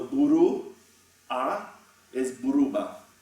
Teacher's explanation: However, there is at least one effect where I really think you probably have to say there is bipositionality in Basque, even if you don't have a surface geminate in a pronunciation. So in Albisu Basque, okay, we have U plus a vowel yields an epenthetic B